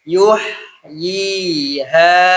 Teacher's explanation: Jadi monyongnya di huruf ya saja. H-nya terbuka. · Jadi jangan di yuh itu terbuka ya, ha terbuka. Yuh, jadi monyongnya di huruf ya saja, ha-nya terbuka. Yuh yi, dan alirkan, lepas nih dia.